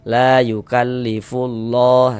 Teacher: Jadi dia cara membacanya itu langsung masuk dia langsung diidgamkan. Jadi dari fu langsung masuk ke huruf lam yang ada tanda bacanya ini.